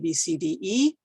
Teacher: And just to give you an idea of the change in sound, A, E, and I end in a Y position, O and U end in a W position. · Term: alphabet vowels